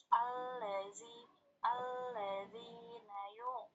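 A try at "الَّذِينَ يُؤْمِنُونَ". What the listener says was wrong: Bukan yu'. Perhatikan itu ain atau hamzah? Hamzah. Jadi bacanya yu, bukan yu'.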